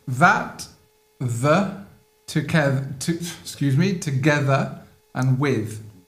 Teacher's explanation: Maintenant, vous avez un TH qui est dit hard, ok? Donc là, vous allez avoir les vocal cords, les cordes vocales qui vont vibrer